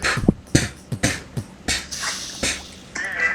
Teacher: frunzo un poquito los labios y suelto totalmente el aire fuertemente para que haya como ese sonido seco del bombo como que retumba.